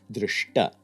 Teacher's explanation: the dental takara forces first the unstable palatal sha to jump down to a retroflex shakara · Of course, there's no velar sibilant to jump up to. Then the dental ta is simultaneously also dragged up to the retroflex ta, so you get drishta